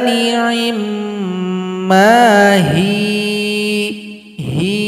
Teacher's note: ya disukunkan huruf ha yang sebelumnya yang kasrah dipanjangkan dua ketukan karena dia sudah menjadi mad asli atau mad tabi'i.